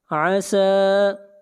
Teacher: سین کو کھینچ کر پڑھیں گے 1 الف کے برابر ، مد اصلی ہے،